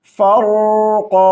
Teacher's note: रा को भी क़ाफ को भी मोटी आवाज़ के साथ पढ़ेंगे